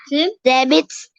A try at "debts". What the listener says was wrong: Bukan debits, nggak ada i-nya. Debts. B-nya silent. B-nya silent.